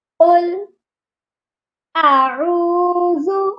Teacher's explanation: اعوذ میں حمزہ اور عین دو آوازیں آنی چاہیے. پہلے حمزہ کی آواز پھر عین کی آواز، اور عین جو ہے وہ واو مدہ کے ساتھ ہے، اس لیے وہ ایک الف کے برابر لمبا کر کے پڑھا جائے گا.